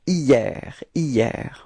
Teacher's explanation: Okay, so it's quite funny because actually it does start with a H, but then in French we don't pronounce H, so we've got the sound hier